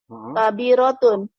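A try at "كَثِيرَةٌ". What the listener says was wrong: Bukan kabirah. Titiknya di atas 3.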